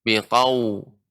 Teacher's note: Ketika membaca waw yang sukun dimonyongkan bibirnya.